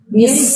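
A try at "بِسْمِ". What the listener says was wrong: Biasa. Biasa. Biasa ibu ya. Coba ibu, misalkan ibu baca mobil bis, misalkan, coba gimana? Kan biasa kan? Tidak. Mobil bis, tidak seperti itu kan? Sama bu, biasa. Coba bismi. Biasa baca Quran itu jangan terlalu berat.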